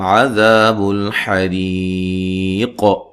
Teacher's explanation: را کو باریک پڑھیں گے اور وقفاً قاف پہ قلقلہ بھی کریں گے، مد کے ساتھ وقف کر سکتے ہیں. · یہاں میم ساکن کا اظہار ہے، غنہ نہیں کریں گے